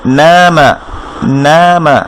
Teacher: নুন তার পাশে খালি আলিফ, তার উপরে ফাতহা আছে, এটা এক আলিফ মাদ হবে